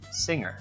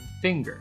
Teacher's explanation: It may seem that ing actually is a sequence of a n and a g, but it is actually a single sound. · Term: engma